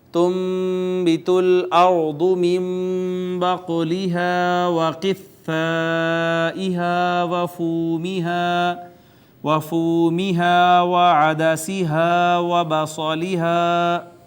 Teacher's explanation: ناظرین، نون ساکن کے بعد با آئی، با نے اس کو چھوٹی میم سے اقلاب کر دیا اس کا، اس کے بعد قاف پہ قلقلہ، ہا کا جو مخرج ہے وہ اقصی حلق ہے، اس کے بعد الف مدہ ہے، پھر یہ مد منفصل آ گئی، پھر یہ الف مدہ، یہ واو مدہ، یہ الف مدہ، پھر الف مدہ، پھر صاد حروف مستعلیہ میں سے، اور یہ الف مدہ۔